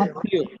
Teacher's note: তয়ের সাথে মহাফলা যুক্ত হওয়ার কারণে ওই তটা দুইবার যুক্ত হয়েছে, দুইবার উচ্চারিত হয়েছে।